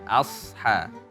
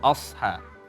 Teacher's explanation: Tipiskan hamzahnya, tebalkan sodnya, ya asha, bukan osha.